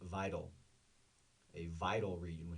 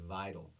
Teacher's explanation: The stress, the emphasis is on the first syllable, the I